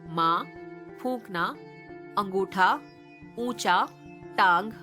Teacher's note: अनुनासिक स्वरों के उच्चारण में मुंह से अधिक तथा नाक से बहुत कम सांस निकलती है